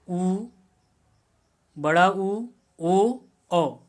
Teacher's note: जो वे स्वर जिनका उच्चारण करते समय ओष्ठ वृत्त के आकार में खुलते हैं उनको हम वृत्ताकार स्वर कहेंगे, कि उनके उच्चारण में जो ओष्ठ की हमारी आकृति होती है वह वृत्त के जैसे बन जाती है।